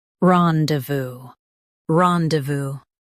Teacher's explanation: Stress ron and keep de voo smooth.